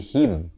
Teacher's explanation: Ha baris kasrah bunyi hi, bukannya bunyi he. Jadi bila bertemu mim jadi him.